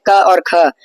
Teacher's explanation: क और ख का उच्चारण स्थान कंठ है और आभ्यंतर प्रयत्न विवृत है तो स्पष्ट है तो इनका अभ्यंतर